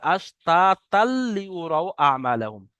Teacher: অর্থাৎ যদি এখানে আমরা আয়াত না করি, না দাঁড়াই, তাহলে কিন্তু এই তা দুজাবার তানবিন আছে আর তারপরে লাম এসছে, এটা ইদগামে তাম বলা হয়। তানবিনকে লামের সাথে মিলিয়ে বিনা গুণনায় পড়তে হবে, তাহলে আশতাতাল লিউরাউ আমালাহুম।